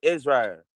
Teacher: she'll drop the L and make it into a strong R